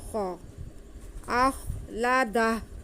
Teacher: خا کو منہ گول کر کے پڑھیں گے، حلق کے شروع والے حصے سے جو منہ کی طرف ہے